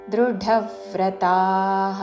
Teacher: మహాప్రాణాక్షరము ఢ దాని మీద ఆఘాత